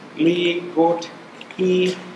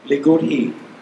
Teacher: The T and H make their own separate sound.